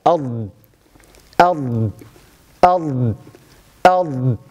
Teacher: صفة الاستطالة تمدد الصوت عند النطق بحرف الضاد. إذا لاحظوا فيحدث تلك الحركة أض أض أض أض.